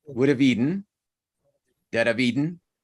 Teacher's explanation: With the exception of the verb eat or eaten, all of those vowels are schwas.